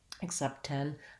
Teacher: if the next word starts with the t i may only do one t sound